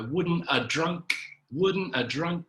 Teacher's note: didn't even pronounce the have